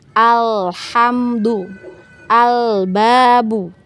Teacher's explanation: Nah, kita fokusnya ke alif lam, tapi panjang pendek juga harus diperhatikan. Dan untuk lam sukun ya, hati-hati jangan sampai ada pantulan ya. Jangan ada pantulan, tawalut ya.